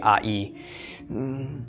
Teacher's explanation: it's called a diphthong. It's the combination of the short A with the Y of the Yod, pronounced really quickly, I-E. Okay, so it kind of becomes I.